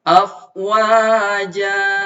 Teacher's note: Karena berhenti di tanwin fathah. Jadi ketika berhenti, tanwinnya hilang. Jadi panjang 2 harkat. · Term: mad iwad